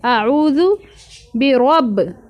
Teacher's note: اعوذ میں الف کی الگ آواز آئے حمزہ آ اور عین حلق سے نکالنا ہے